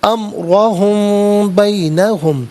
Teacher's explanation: امرہم میں میم ساکن ہے، میم ساکن کے بعد با آ رہا ہے، تو میم ساکن کو غنّے کے ساتھ پڑھیں گے